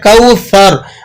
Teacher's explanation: قرآن مجید میں جب آپ اس کو پڑھیں گے تو پھر اس چیز کا مکمل دھیان کرتے ہوئے اس کو ادا کریں گے کہ اس کو آپ نے کوثر پڑھنا ہے، اس میں سیٹی نہیں ڈالنی، اور آخر کا جو را ہے اس کو آپ موٹا کر کے ادا کریں گے